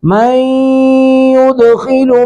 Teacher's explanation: اگر اس کو اتصال کرنا ہے، ملانا ہے، تو پھر میم پر تنوین، نون تنوین کے بعد یا ادغام باغنہ کرتے ہوئے اس کو ملائیں گے